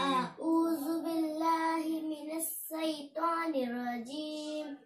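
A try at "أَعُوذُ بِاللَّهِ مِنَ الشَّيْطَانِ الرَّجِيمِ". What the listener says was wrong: मिनश शैतान में गलती है ना, शीन के निकाला।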